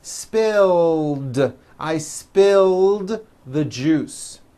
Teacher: spill ends with a voiced l sound spill so it becomes spilled